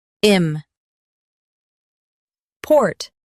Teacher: im port im port Stress port and keep im light.